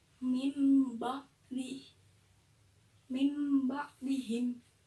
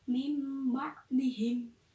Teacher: maksudkan jadi nunnya itu dibaca mim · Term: iqlab